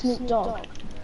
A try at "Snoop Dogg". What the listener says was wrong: Snoop Dogg? The way you say it, it's like Snoop and then you have a pause and then you're just like, dog. Snoop Dogg. No, it's Snoop Dogg. It's Snoop Dogg. Snoop. Dog.